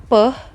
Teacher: itu merupakan bunyi bilabial yang diucapkan secara meletup atau plosif.